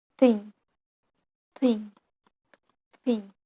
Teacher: And then th sound, th, thing, th. Th sound is fricative voiceless on dental coronal place.